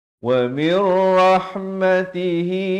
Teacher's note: So bertemu nun bunyi min, datang ra jadi idgham bila gunnah, masuk tanpa dengung